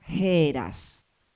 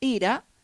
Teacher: De todas formas, aunque no se vea bien, igual acá está eh puesta la transcripción y acá la eh pronunciación que era heras, o sea, en este caso también tenemos una ETA aspirada